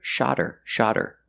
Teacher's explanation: the words then H is silent then you hear shodder shodder the T changes to a fast D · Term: link the words